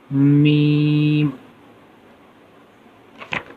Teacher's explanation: میم جو ہے دونوں ہونٹوں کے خشکی کے حصے سے ادا ہوتا ہے